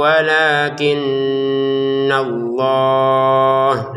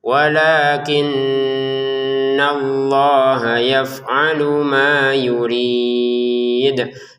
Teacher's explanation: Lamnya dua harakat, nunnya kita dengungin